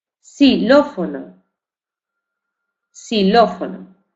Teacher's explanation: en posición inicial de palabra, la pronunciación más frecuente es la de S.